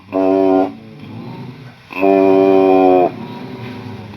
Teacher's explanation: دونوں ہونٹوں کے خشک کنارے، یہ باہر والے کنارے ملیں گے، 1 حرف ادا ہوگا